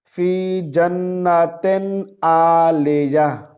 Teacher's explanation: आइन को हमजा नहीं पढ़ना, इस तरह नहीं पढ़ेंगे। यहाँ पर देखें, फ़ी जन्नतिन आलिया, जन्नतिन नहीं है, जन्नतिन, ओके।